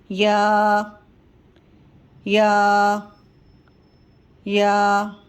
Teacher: زبان کا درمیانہ حصہ اور اوپر کے تالو کے درمیانے حصے سے یا کی ادائیگی ہوگی